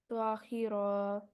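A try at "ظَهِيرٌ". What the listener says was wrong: الف نہیں ہے آخر میں، ظہیر پڑھیں گے، ٹھیک ہے، ظہیر، آگے یہ دو پیش ہٹا دیں گے اس کے اوپر سے، اور یہ را کو ساکت کے ساتھ پڑھیں گے، ظہیر، اوکے۔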